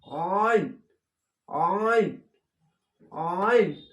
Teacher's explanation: মোটা করে হবে, চেপে হবে গলা